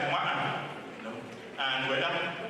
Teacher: The glottal stop, which comes also frequently in that dialect in words like Ma'an, and Weda.